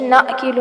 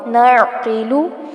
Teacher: عین پر جھٹکا نہیں آنا چاہیے، نعقیلو نہ ہو، نعقیلو.